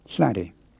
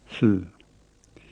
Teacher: It begins with a whispered L, and turns into a normal L, and together they make the breathed L